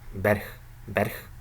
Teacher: Okay, and we have ba, rich, these two syllables, and in the second syllable we have a reduced I sound